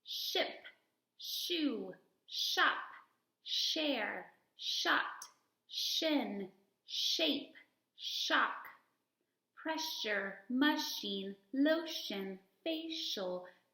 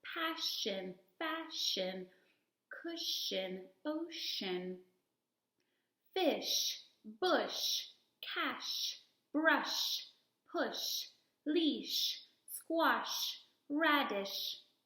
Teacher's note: that says SH says Shh so when I make that sound my lips are rounded my teeth are very close together and my tongue is sitting right behind my teeth and I blow soft air and the air all comes forward and my voice is off